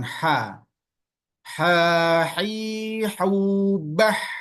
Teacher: Ha ini agak tipis jadi dia lebih mudah tapi tetap di tengah tenggorokan